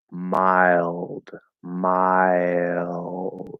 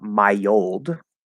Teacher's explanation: that small Y linking sound connects over to that L vowel sound. Okay, mild, mild.